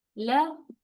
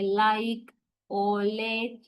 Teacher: we touch the alveolar ridge, okay? With the tip of the tongue. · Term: Alveolar consonants